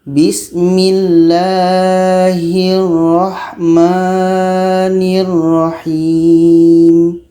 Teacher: Dalam bismillah ini, ra ini dibaca tebal. Ra tebal, ra tebal.